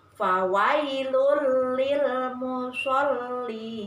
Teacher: Kemudian yang ketiga, idgham bila gunnah. Artinya bacaan yang cara membacanya dimasukkan tetapi dengan tanpa dengung